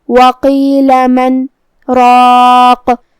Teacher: قاف کی ادائیگی زبان کے جڑ اور تالو کے نرم حصے سے ہے. قاف حروف التفخیم میں سے بھی ہے تو ہمیں یہ حرف کو موٹی آواز میں ادا کرنا ہے.